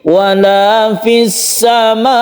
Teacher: Supaya tasydidnya itu sempurna, supaya tidak hilang bahwa huruf yang terakhir tersebut adalah bertasydid, supaya tidak hilang kalau hamzah ini dia itu sukun hamzah. Biasanya orang-orang membaca itu kan lemah, fis sama, seperti tidak ada hamzahnya. Cara menyempurnakan itu dengan an-nabr ini.